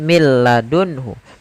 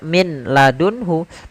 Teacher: Tidak dibaca min ladunhu, tapi langsung ke huruf lam. Karena nunnya dianggap tidak ada dan diidghamkan ke huruf lam. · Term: idgham bila gunnah